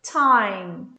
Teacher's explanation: Eu tenho esse T com um chiadinho.